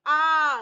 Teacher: जीभ का पिछला भाग है, देखेंगे आ, तो जीभ के पिछले भाग से आवाज आ रही है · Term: दीर्घ